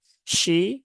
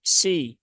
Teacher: Ar dia dibaca tebal, kemudian shin, ya, shinnya dia kasroh berarti dia dibaca i ya, shi, ya, jangan sampai menjadi si.